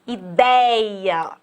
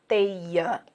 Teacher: Gente, ditongo aberto é quando você tem a pronúncia aberta. Tipo, por exemplo, ideia, a boca abre. É diferente de eu falar teia, ter esse E fechadinho.